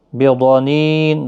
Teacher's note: ضاد حروف مستعلیہ ہے، پور پڑھنا ہے ، نی یا مدہ ہے، اور وقف کی صورت میں جب